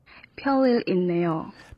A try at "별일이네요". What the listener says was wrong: Yeah, so you don't really start with P sound. 별일. 별일이네요. And it can sound a little P to other people because in English B, it's like 별일.